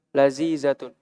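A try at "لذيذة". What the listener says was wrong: Lazizatun. Bukan lazizah ya. Ini pakai zal. Lazizatun.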